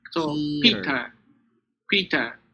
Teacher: first syllable is E, but the other one is the schwa